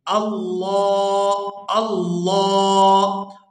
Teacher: لفظ اللہ کے لام سے پہلے زبر ہے تو اس کو پورا ادا کریں گے